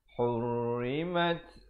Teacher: Ha pedas di tengah ini. Hurrimat. Ada bunyi hamasnya.